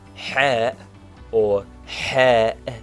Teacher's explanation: Ha, or ha, is a heavy H from the back of the mouth.